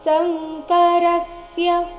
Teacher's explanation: ಸಂಕರಸ್ಯ ರ ಮೇಲೆ ಆಘಾತ